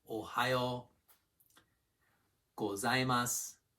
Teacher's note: start with a low pitch, then go to a high pitch for the next bit, and then come down on the last one. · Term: Pitch accent